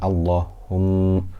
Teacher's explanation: we have a mim with a shadda, so we have gunna for 2 harakat